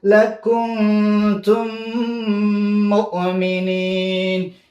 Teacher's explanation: دې کې م غنا کېږي ځکه چې د میم مخرج غنا دی